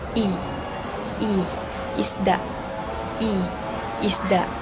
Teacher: Ang punemang E ay makikita sa ah mataas at ang bahagi ng dila nito ay makikita sa harap. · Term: ponemang I